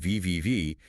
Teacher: If you say VVV, you can feel your vocal cords buzz. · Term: voiced V sound